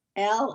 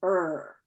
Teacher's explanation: the l is forward and the r is backward